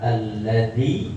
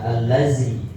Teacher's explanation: Kalau misalnya ini huruf zal, makhrajnya ujung lidah menempel ke ujung gigi seri atas, gak bakal allazi, pasti alladzi